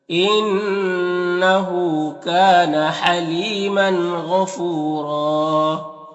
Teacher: और यहाँ पर तनवीन के बाद गैन हुरूफ हल्की में से तो तनवीन में इज़हार हक़ीक़ी होगा, तनवीन को ज़ाहिर करके जल्द पढ़ेंगे। गैन हुरूफ मुस्तालिया में से पुर पढ़ेंगे, फू में वाव मद्दा है, और यहाँ पर दो ज़बर है तो एक ज़बर के साथ अलिफ पढ़ेंगे और रॉ को पुर पढ़ेंगे इस तरह से।